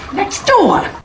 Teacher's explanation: But if we want to sound more American, we would say next door, where the T disappears and two words get linked together.